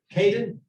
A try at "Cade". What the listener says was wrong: Yeah, without the N. Just Cade. Cade.